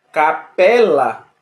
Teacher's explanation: são palavras cuja sílaba mais forte é a penúltima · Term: paroxítona